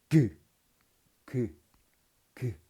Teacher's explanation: 혀뿌리로 저 뒤에 쪽에 입천장을 막죠. 그다음 터트리면서 그라고 발음하죠.